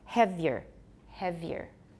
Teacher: We can make it sound like two syllables instead of three.